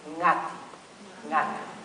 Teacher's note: It's a familiar sound we have in words like sing, bring, but here it's in an unfamiliar place, which is namely at the beginning of a word.